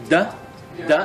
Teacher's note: da is a vocalized dental